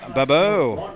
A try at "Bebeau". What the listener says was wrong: No R's in there.